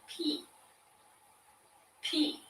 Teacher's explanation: again put your hand on your throat and go pee p you don't feel the vibration like you did when you hear or say b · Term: unvoiced